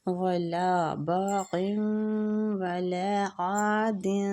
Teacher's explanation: عین کو وسط الحلق سے نکالیں گے اور کھینچیں گے